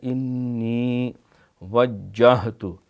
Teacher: انی نون کے اوپر کیونکہ شد ہے لہٰذا یہاں غنہ کریں گے، ایک الف جتنی دیر بھی لگے گی، آگے یا بھی ہے۔